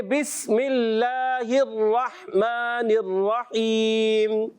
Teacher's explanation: سین کی ادائیگی باریک رہے گی سیٹی کے ساتھ